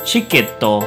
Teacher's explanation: even though it has the T-I sound, we're not going to pronounce it that way. We're going to instead use the ch sound. So the word ticket will transform into the pronunciation chiketto.